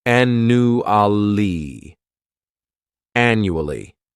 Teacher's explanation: This word has 4 syllables, and the stress is on that first syllable. The second syllable, it's like you're just saying that letter U, and the third syllable has that schwa, annually. Annually.